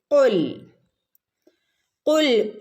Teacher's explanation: നാവിന്റെ മുരട് ഭാഗത്തു നിന്നാണ് കാഫ് വരുന്നത്